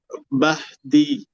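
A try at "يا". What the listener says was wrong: بہ نہیں ہے وہ یا ہے یا ہا زبر یا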